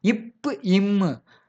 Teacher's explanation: மேல் உதடும், கீழ் உதடும் ஒன்றாக இணையும். ஒட்டும்.